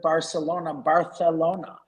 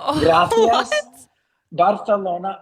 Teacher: everything that's got an S sound has a TH sound to it now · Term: lisp